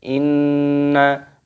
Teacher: Dibaca berdengung Inna seperti itu dan di hati-hati nun-nya di sini dibaca pendek berdengung tapi pendek